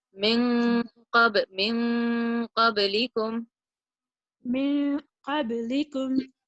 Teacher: Qaf is one of the letters, so your ikhfa here naturally will sound heavier. Min qablikum.